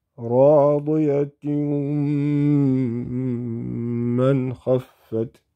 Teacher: If we have a tanween, kasrataini, then meme come after it. So the natural sound would be with ghunna, because mim belongs to idgham with ghunna. So it would be radiyatun man khaffat, if you were to combine that.